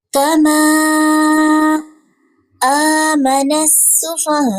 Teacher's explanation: سین میں باریک سیٹی کی آواز